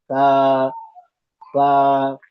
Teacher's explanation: और सा के अंदर सीटी की आवाज नहीं आएगी, नहीं तो ये सीन बन जाएगी या सीन से मुशाबियत कर जाएगी।